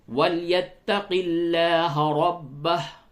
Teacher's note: لام کو باریک کیجئے کیونکہ لفظ اللہ کے لام سے قبل زیر ہے